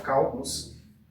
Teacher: pois a antepenúltima sílaba é a tônica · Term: proparoxítona